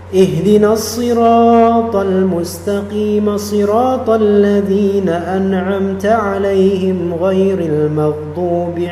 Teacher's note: dalam lafal almustaqim qim di sini dia menjadi mad asli biasa karena ya karena di situ ada kasrah bertemu dengan ya maka dia menjadi mad asli thabi'i.